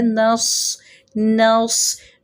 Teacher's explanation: نون باریک صاد موٹا، صاد زیر سی، زیر پڑھنے میں بھی صاد کی تفخیم برقرار رہنی چاہیے، صاد موٹا ہی پڑھیں گے، صاد زیر سی۔